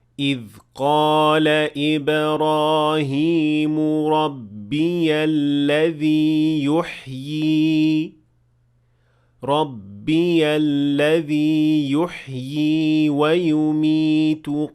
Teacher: So when I stopped at the word يحيي, I pronounced both ya, the one that is written and the symbol as well, even if I stopped at it. And also when I kept on reading, I pronounced the symbol of the second ya.